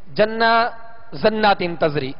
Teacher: بس اوقات ایسا بھی ہوتا ہے کہ جیم کو زا کی آواز دی جاتی ہے, جیسے جنہ زنات تزری اس طرح پڑھا جاتا ہے, یعنی جیم کو زا کی آواز میں لوٹایا جاتا ہے.